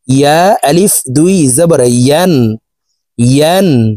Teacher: প্রিয় দর্শক, ইয়ার উচ্চারণ জিহ্বার মধ্যখান থেকে হবে, এভাবে পড়তে হবে।